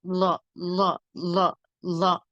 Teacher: லாய்க்கு எப்படின்னா ரெண்டு பக்கமும் லேசா காத்து வெளியில வரும் லா ல லா லா லயக்கு ரெண்டு பக்கமுமே வலது பக்கம் இடது பக்கம்